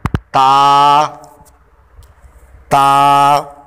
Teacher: ता ज़ुबान की नोक और ऊपर के दांतों की जड़ से अदा होता है।